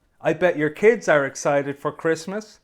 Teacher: don't always have to ask a question to start the conversation you can also use a statement like this one with Rising intonation at the end so it sounds like a question · hear how my voice Rises at the end for Christmas